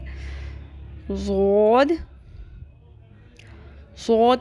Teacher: जबान की बाई करवट बाई तरफ की ऊपर की दाढ से टकराती है तो द अदा होता है